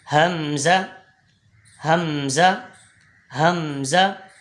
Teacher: یہ دونوں ایک ہی طرح سے ایک ہی مخرج سے ادا ہوتے ہیں. حمزہ حمزہ حمزہ حلق کے نیچے والے حصے سے ادا ہوتا ہے